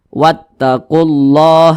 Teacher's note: Kalau sebelum kalimat Allah itu hurufnya memiliki tanda baca dhammah seperti ini atau tanda baca fathah, maka kalimat Allah itu dibaca tebal, dibaca tafkhim